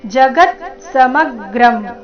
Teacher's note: ಶಬ್ದದಲ್ಲಿ ಎಲ್ಲ ಅಕ್ಷರಗಳು ಹ್ರಸ್ವ, ಗ ಮತ್ತೆ ಮ ಮೇಲೆ ಆಘಾತ ಬರಬೇಕು